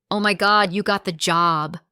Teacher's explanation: That upward rise in tone is full of excitement. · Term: rising intonation